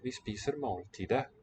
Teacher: With a silent T again